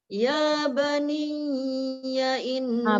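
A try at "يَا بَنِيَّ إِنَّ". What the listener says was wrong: Bani tu tak dengung. Dia tidak ada nun bertemu ya atau tanwin bertemu ya. Ya baniya in sekadar tu je.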